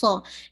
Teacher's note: سو آپ کو فیل ہوگا اس میں وسلنگ ساؤنڈ بھی ہے